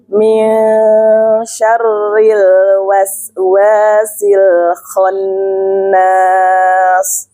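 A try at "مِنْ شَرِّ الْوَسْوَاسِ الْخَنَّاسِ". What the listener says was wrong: Bukan nas, bukan nas, tipis.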